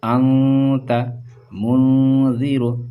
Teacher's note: حروف اخفاء یہ ہوتے ہیں، یہ تنوین یا نون ساکن کے بعد اگر یہ حروف میں سے کوئی حرف آتا ہے تو اس کو نون کی آواز کو ناک پہ چھپا کر پڑھتے ہیں، جیسے پڑھیں گے انت منذر، ناک میں آواز چھپ رہی ہے، نون ساکن آ گیا، نون ساکن کے بعد تا آیا، تا کی دیکھیے حروف اخفاء میں سے ہے، ٹھیک ہے۔